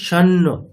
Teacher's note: ওম ওম শান্ন, আচ্ছা আমরা কি বলছি শান্ন, যেহেতু অনুস্বারের পরে দন্তের ন আছে তাহলে অনুস্বারটা দন্তের ন